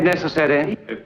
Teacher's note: Look at necessary. Every schwa can be clearly heard.